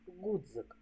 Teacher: к твердий приголосний у слові Гудз шість букв і п'ять звуків ДЗ позначає один приголосний твердий звук